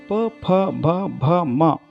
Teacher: ಪ ವರ್ಗದ ಅಕ್ಷರಗಳು ತುಟಿಗಳ ಸಹಾಯದಿಂದ ಹುಟ್ಟುವುದರಿಂದ ಓಷ್ಠ ಅಕ್ಷರಗಳು ಎಂದು ನಾವು ಕರೆಯುತ್ತೇವೆ.